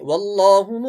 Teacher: اللہ کا جو لام ہے وہ موٹا پڑھا جائے گا